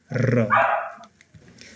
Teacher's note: जिब्रो कामेर थर्केर उच्चारण हुने वर्ण र हो। जिब्रो नथर्किकन, जिब्रो नकामिकन र वर्ण उच्चारण हुँदैन। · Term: कम्पित वर्ण